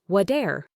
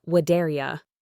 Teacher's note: What and are blend together. The T sound at the end of what is often softened to a D sound when it comes before a vowel. So what are becomes whate'er.